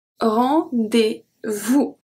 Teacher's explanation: The S at vous is not pronounced. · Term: les lettres muettes